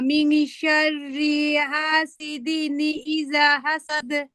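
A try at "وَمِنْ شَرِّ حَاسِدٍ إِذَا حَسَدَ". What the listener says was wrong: মাশাআল্লাহ, মাশাআল্লাহ। আহ ভালোই পড়ছো আলহামদুলিল্লাহ।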